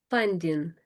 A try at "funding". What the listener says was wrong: I guess it's the ing again, isn't it? So funding.